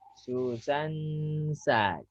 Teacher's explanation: Susan itu agak lama, lebih dari 2 ketuk. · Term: Dengung